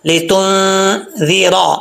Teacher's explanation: کو لے نہیں پڑھنا، لام زیر لی ہوتا ہے، لی تنذِرَ، ذال کے نیچے زیر ہے، یہ ذال نارمل پڑھا جائے گا، اس میں سیٹی نہیں ہے